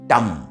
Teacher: मूर्धन्य से उच्चारण होता है